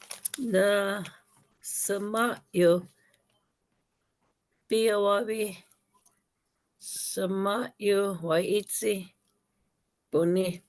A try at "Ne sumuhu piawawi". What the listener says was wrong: Okay, so you're breaking them. You're saying them individually. Okay, ne sumuhu piawawi.